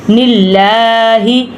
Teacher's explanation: فَإِنَّهُ نَزَّلَهُ عَلَى قَلْبِكَ بِإِذْنِ اللَّهِ جیسے کہ نلا، اب پہلا جو ہے زیر والا ہے، تو پہلا جو حرکت ہے زیر ہے، تو اس لیے ہم نے لام کو موٹا نہیں پڑھنا، ادھر ہم لام کو باریک ہی پڑھیں گے